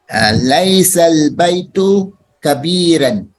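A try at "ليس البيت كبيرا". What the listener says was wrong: Nah, bagus.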